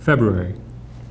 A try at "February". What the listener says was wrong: He didn't say the R. February. February.